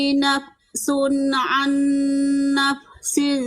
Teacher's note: Fa itu Gigi sama bibir Gigi sama bibir jangan bibir sama bibir